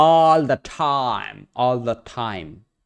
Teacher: hanging on to my vowels a little bit longer, but then I'm not exerting that much effort onto the consonants. Especially at the ends of words.